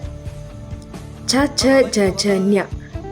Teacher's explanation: ಚ ಛ ಜ ಝ ಞ ಇವನ್ನು ಹೇಳುವಾಗ ನಾಲಿಗೆ ಅಂಗುಳವನ್ನು ತಾಕುತ್ತೆ. ಅದಕ್ಕೆ ಇವನ್ನು ಅಂಗುಳ ಅಥವಾ ತಾಲವ್ಯ ಅಂತೀವಿ.